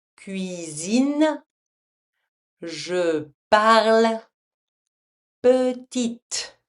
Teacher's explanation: Placed at the end of longer words after a consonant, the final E is silent and is simply here to show that the last consonant should be pronounced